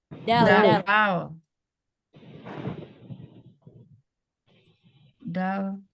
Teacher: ujung lidah bertemu pangkal gigi seri atas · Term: huruf Dal